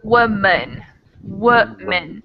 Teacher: So I think a case could be made for either of these vowels, but I personally change the second A into a schwa sound.